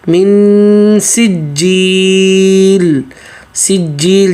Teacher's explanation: جیم کی تشدید کو واضح پکڑ کے پھر آگے یہاں پہ مد کر کے اور آگے لام کو واضح کرنا ہے